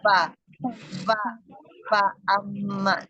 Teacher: bibir bawah bagian dalam bertemu dengan ujung gigi seri atas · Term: huruf fa